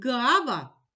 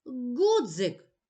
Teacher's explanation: звук г вимовляється трохи протяжно а звук Ґ вимовляємо коротко